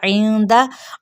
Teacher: आइन को वस्ते हलक से अदा करते हुए नून पे इख्फाई हकीकी का कायदा होगा।